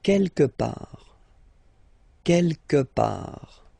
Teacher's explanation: Don't pronounce the final T.